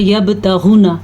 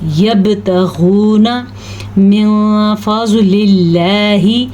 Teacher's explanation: یہاں پہ اللہ کا نام باریک پڑھنا ہے کیونکہ اللہ کے نام سے پہلے زیر ہے تو اللہ کا نام باریک پڑھا جائے گا۔